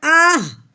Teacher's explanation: تو کیسے ملائیں گے کہ حمزہ کی آواز پہلے نکالنی ہے، ہا کی آواز بعد میں نکالنی ہے، کیونکہ حمزہ پہلے ہے اور ہا بعد میں ہے۔ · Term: ہا ساکن